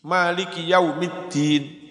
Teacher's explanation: Dal itu ujung lidah antara gusi dan gigi.